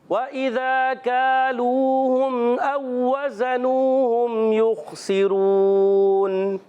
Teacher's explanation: واو ساکن سے پہلے پیش ہے، واو مدہ ہوگا، وقف کرنے میں ہو جائے گا مد عارض